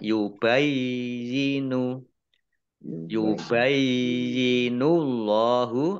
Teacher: Allahnya dibaca tebal karena harokat di depannya dhammah.